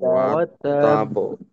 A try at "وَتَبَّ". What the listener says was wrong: এটা এই এই কলকলার আওয়াজের যে দুইটা অংশ, মাঝের অংশটা আরেকটু লম্বা করব, অর্থাৎ নীরবতাটাকে। তাব, তাব, কারণ এখানে যেহেতু দুইটা হরফ, দুটোটা হরফকেই আমাদের সময় দিতে হবে, সুতরাং সময়টা দ্বিগুণ। তো উচ্চারণটা হবে ওয়াতাব, ওয়াতাব। মাঝের সময়টাকে স্বাভাবিকের থেকে একটু বড় করা, সাথে এই নীরবতাটাকে।